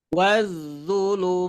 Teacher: tandaanya apa Fath berdiridir setiap fathah berdiri panjangnya berapa du harakat fathah berdiri panjangnya dua harakat tetapi ketika bertemu huruf yang disukunkan karena berhenti maka panjangnya boleh empat